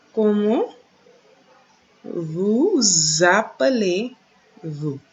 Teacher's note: And we know we have that z sound after vous appelez. We have that z sound because of the S coming before the vowel, which creates the liaison.